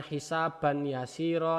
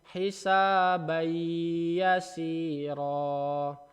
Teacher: Kemudian kalau tanwin hisaban yasiro menjadi hisabayasiro. Jadi annya jadi a biasa, kemudian masuk ke dalam huruf ya-nya. Bukan hisaban yasiro, tapi hisabayasiro. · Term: idgham bi gunnah